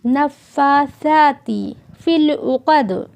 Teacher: عین حلق کے درمیانی حصے سے ادا کیا جائے گا اور قاف کو گول کر کے پڑھیں گے، دال میں قلقلہ کریں گے۔